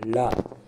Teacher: நாவின் இரு பக்கங்கள். நா மேல் பற்களின் அடியை தொடுவதால் தோன்றும் எழுத்து